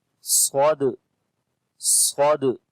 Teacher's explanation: Sad we read in heavy sound due to isti'la letter.